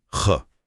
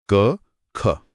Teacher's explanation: महसूस हुआ वो हवा का झोंका वही है महाप्राण · हाँ, बिल्कुल महसूस हो रहा है। तो अगर हम ख ध्वनि को देखें तो उसका उच्चारण स्थान कंठ है, आभ्यंतर प्रयत्न स्पृष्ट है और बाह्य प्रयत्न अघोष और महाप्राण है